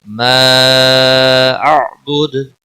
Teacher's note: مد منفصل ہے، تین سیکنڈ یا تین الف کے برابر کھینچ کر پڑھیں گے